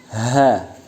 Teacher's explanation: Yang ke-30 ialah ha. Makharijul hurufnya bertempat pada pangkal tenggorokan